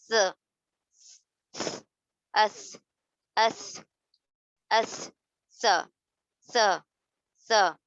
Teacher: ज़बान की नोक को दाँतों के किनारों से, ऊपर के दाँतों के किनारे से हम मिला रहे हैं।